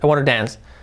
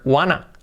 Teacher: You make it faster, I want to dance. We make it faster, we create the famous word wanna.